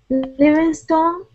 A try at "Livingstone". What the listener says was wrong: You know, probably we would say Livingston, because when people have stone and stun and words like long words like this, usually the ending is just dropped a little bit, like Livingston, John Livingston. Okay, so let's say Livingston.